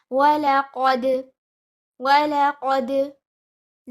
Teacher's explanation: You join the qaf with dal, bouncing the dal, giving qalqala.